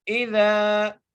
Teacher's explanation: عبدن اذا، حمزہ کی نیچے زیر ہے، دال کے اوپر زبر ہے، زال کے ساتھ الف مدہ آ گیا ہے، اس لیے ہم زال کو ایک الف مقدار کھینچ کے پڑھیں گے